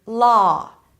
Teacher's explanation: on the West Coast, people actually merge this sound with the as in father, a back open vowel sound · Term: the merge